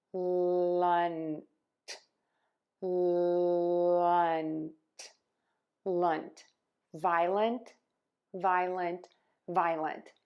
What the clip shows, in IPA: ˈvaɪələnt or ˈvaɪlənt